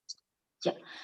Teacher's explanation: Dari tengah-tengah lidah, dan dia nggak ada udara yang keluar.